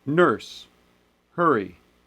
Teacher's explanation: most americans would say nurse hurry same sound there's no variation